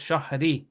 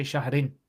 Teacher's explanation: You would say An Shahrin. But because there's the word ibn, you actually don't pronounce the double vowels here. You don't pronounce tanween there.